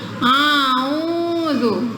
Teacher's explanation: Belum apa-apa hamzahnya udah masuk hidung.